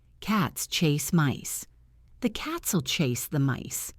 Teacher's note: You have to squeeze the and will and the into tiny spaces so that the beat of cats chase and mice stays steady. If you practice clapping your hands on the important words, you will feel this rhythm.